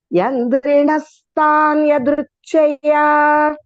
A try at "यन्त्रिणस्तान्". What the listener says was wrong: Yandri, you're saying Yandri. Yantrinas.